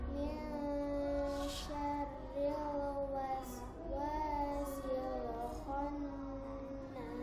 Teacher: Syarril tipis sayang, ro-nya tarkik bukan tafhim. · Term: Ro tarkik